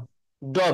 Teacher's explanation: ড ভিতরে চলে গেল, স্বরতন্ত্র কেঁপে উঠলো ভিতর থেকে